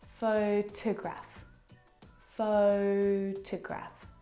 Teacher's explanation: The second syllable is unstressed and it is uh reduced down to the schwa sound.